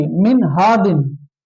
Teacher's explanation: इसको जाहिर करके पढ़ेंगे और बिला गुन्ना पढ़ेंगे